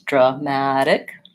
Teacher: our syllable stress is on this middle syllable ma. So it's dramatic, short, long, short.